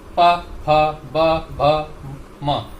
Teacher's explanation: इसी प्रकार पवर्ग का उच्चारण स्थान ओष्ठ हैं, हमारे अधर, हमारे ओंठ। पवर्ग को हम जब भी बोलेंगे तो हमारे ओंठ चिपकेंगे जरूर, प फ ब भ म।